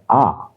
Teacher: आ के उच्चारण पर हमारा मुख जो है पूरा खुलता है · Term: विवृत